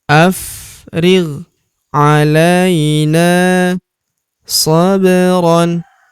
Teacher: Huruf la kita ayun sekali karena terdapat ya sukun di depannya yang ini. Ala huruf na kita panjangkan dua harakat karena terdapat tanda alif di depannya